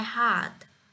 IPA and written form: hɑːrt (Heart)